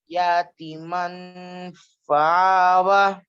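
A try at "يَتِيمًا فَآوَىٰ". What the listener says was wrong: یا کو کیوں کھینچ رہے آپ؟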